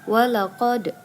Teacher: Nah, itu ada huruf dal yang bersukun disebut dengan qalqalah sughra.